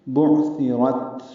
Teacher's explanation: بُعْثِرَتْ عین ساکن ہے، اس پہ اظہار ہے، تا نرمی سے پڑھیں گے، را کو تا سے ملانا ہے، تا ساکن پہ ہمس ہوگا